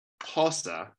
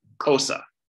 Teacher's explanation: instead of saying Xhosa with a lateral click, this person uses a click that's already in her inventory. She says cosa.